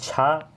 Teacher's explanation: छा तालव्य ध्वनि है, महाप्राण भी है, आघोष भी है, बट कंठ नहीं है, क्योंकि तालव्य पहले ही दे दिया तो कंठ नहीं होगा।